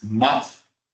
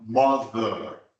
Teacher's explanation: is and mother it looks the same it sounds different and the difference is that one is voiceless and the other one requires the vibration